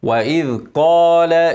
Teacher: افخم القاف ارقق اللام